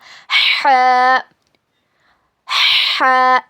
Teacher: हल्लक के बीच के हिस्से से ह अदा होता है और इसको अदा करते वक्त मुंह से हवा बाहर निकलती है। It is pronounced from the middle part of your throat when you pronounce it the wind should come out of your mouth.